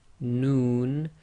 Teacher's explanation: the tip of the tongue pressing on the front hard palate. Your lips actually go a bit round with the Noon